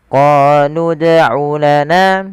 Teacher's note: panjangkan huruf qo dua harakat karena pada lafal qo ada bacaan mad thabi'i